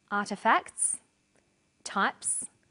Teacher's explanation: the second way s is pronounced at the end of a word is s it's pronounced this way after voiceless consonants